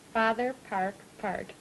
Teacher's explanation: A good, stout retraction of the tongue, sort of curled back when you say park and part